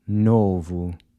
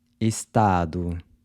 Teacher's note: So the O is pronounced with the U sound, as in the word boot.